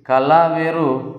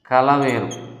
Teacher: ల అనేది నాలుక కొన దంత మూలాన్ని తాకినప్పుడు నాలుకకు ఇరువైపులా గాలి బయటకు ప్రవహించడం చేత పుడుతుంది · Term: దంత్య మూలియ పార్శ్వికం